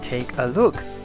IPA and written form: tekəlʊk (take a look)